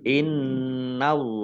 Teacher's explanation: Innallaha nun tasdid dibaca hunah atau mendengung ditahan 2 harokat. Allahnya dibaca tebal karena harokat di depannya fathah.